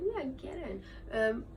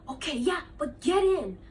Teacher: So this was flat, no rises or falls.